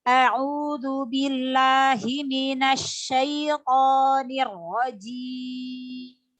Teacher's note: Pada ro tasydid itu ditekan sedikit.